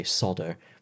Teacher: you miss out the l in solder and say sodo